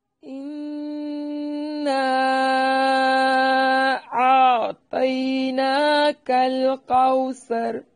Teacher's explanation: اِنَّا یعنی 3 سیکنڈ، اور نا الف مدہ ہے، اور الف مدہ کے بعد حمزہ دوسرے کلمہ کے شروع میں ہے، اس لیے یہاں مد ہوگی، بڑی مد، جسے مد منفصل یا مد جائز کہتے ہیں۔